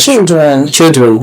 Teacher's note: Short sounds, short E and short schwa at the end.